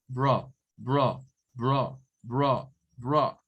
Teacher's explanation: Parece A, pero no es A, es el schwa, es bro. En otras palabras, es como que en eso usted meta una UH y una R.